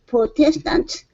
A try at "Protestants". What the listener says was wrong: Protestants. Okay, with an S at the very end.